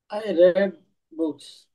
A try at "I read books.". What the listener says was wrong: হ্যাঁ, I রেড books. রিড উচ্চারণ করবো রেড।